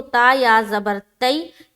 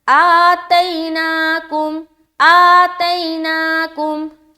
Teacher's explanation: اب دیکھیے آ کو بھی کھینچیں گے کیونکہ کھڑا زبر ہے، ایک الف کی مقدار کے باقدر اسے بھی کھینچنا ہے، اور آگے چلیں گے تو تا یا زبر تئی، یعنی کہ یائلین کا قاعدہ ہے نا، یا ساکن اور اس سے پہلے زبر آ گیا، یائلین نرمی کے ساتھ اور جلد ادا کریں گے اسے۔ اس کے بعد آگے چلیں گے تو نون کھڑا زبر نا، اسے بھی اتنا ہی کھینچنا ہے، آتیناکم، آتیناکم، ٹھیک ہے۔